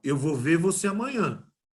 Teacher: Está sumindo o R final e está terminando em vogal.